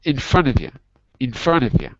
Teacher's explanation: we're going to get rid of the T, and U becomes more like a Y. So it's not yay, it's Y.